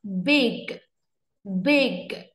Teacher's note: âm g mình bật nhẹ nhàng, âm y đọc nhanh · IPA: /bɪg/